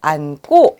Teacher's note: 어간의 받침이 니은입니다. 그리고 어미가 기역으로 시작합니다. 이랬을 때 어미의 기역은 된소리로 바뀌게 되죠. 그러니 안고로 발음하게 됩니다.